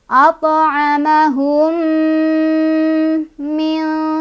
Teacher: Mim sukun bertemu dengan mim, idgham mimi atau idgham mithlan. Cara bacanya adalah kita baca langsung masukkan ke mim yang kedua, ya, sambil berdengung. Dengungannya ditahan, boleh 2, boleh 3, boleh 4.